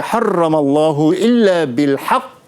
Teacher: apabila kita baca pada bil haqq ni, kita kena ambil masa sikit untuk berhenti. Dia jadi qalqalah akbar dari segi al-Quran tajwid lah.